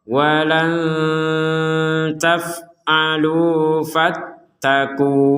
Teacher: kalau kita berhenti fattaku, maka panjangnya itu dua harakat